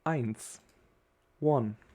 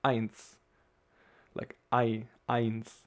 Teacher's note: you can hear that the accentuation is again in the beginning of the word. So you see, it's quite often the case in German, and that you, put the accentuation in the beginning of a word.